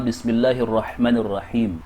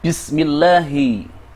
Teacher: Ketika Lam Jalalah mengikuti kasra pada huruf mim, dibaca sebagai tarqiq, yang berarti diucapkan dengan tipis.